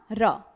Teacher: पूरी की पूरी वर्णमाला में बेटा प्रकंपित और लुंठित व्यंजन के नाम से जाना जाने वाला सिर्फ एक ही अक्षर है